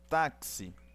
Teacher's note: este X tem som de KS, então tem sim encontro de consoantes. Na palavra táxi tem encontro consonantal.